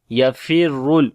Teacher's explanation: Ra we read in heavy sound due to dhamma sign on it, and on the lam we make tawassut quality.